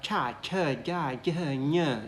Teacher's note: we use most of the tongue, kind of middle of the tongue